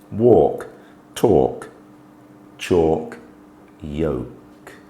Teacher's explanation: the L Sound is much less apparent